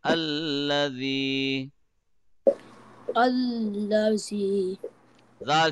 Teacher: so first of all say Allah Allah should be softer man the tip of the tongue will be touching edge of the upper tooth gently and softly